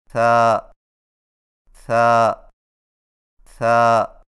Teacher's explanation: ثا کی ادائیگی میں زبان کی نوک کو ثنایا علیہ کے اندرونی کناروں سے نرمی سے لگا کر باریک آواز میں پڑھیں، یعنی ثا ثا ثا۔